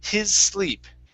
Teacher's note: of saying his with the z sound it's hiss his sleep go right to an s sound an unvoiced s